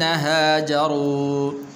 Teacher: را کے اوپر پیش ہے تو اس را کو پر کر کے پڑھنا ہے